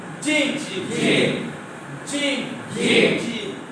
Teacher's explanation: কোথায় থেকে উচ্চারিত হয়? জিহ্বার মাঝখান থেকে।